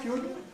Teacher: I'm putting the R into the retroflexion of the D, as I have been taught to do in Swedish and Norwegian, when I have clusters of R, D, R, T, R, L, and R, N.